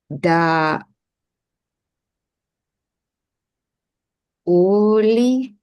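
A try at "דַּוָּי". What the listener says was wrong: Well, the vav has a vowel attached to it. That makes the vav consonantal, and the dot in it, therefore, being strong dagesh. Davai.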